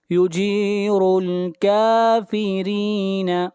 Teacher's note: را کو باریک پڑھیں گے، را کے نیچے زیر ہے